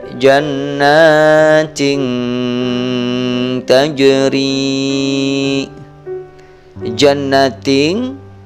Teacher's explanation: terlihat terdengar menjadi samar sedangkan menurut istilah ilmu tajwid ikhfa adalah membunyikan huruf nun mati atau tanwin dengan samar-samar dengan bunyi sengau sepanjang dua ketukan